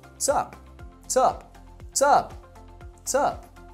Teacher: What's up is typically reduced to just sup